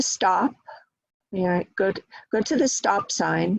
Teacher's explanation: So stop sign will get stress. Each word gets stress because they are both, stop and sign are both one syllables. Stop gets a little bit more stress than sign because it's describing the type of sign.